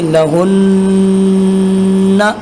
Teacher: نون کے اوپر شد ہے تو میں نے غنے کے ساتھ اسے ادا کر دیا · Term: غنہ